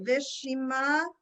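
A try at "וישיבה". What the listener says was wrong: No, I thought I heard a mem.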